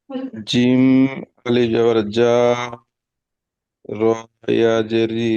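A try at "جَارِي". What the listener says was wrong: র, র, ইয়াটাকে কেন যুক্ত করছেন রয়ের সঙ্গে?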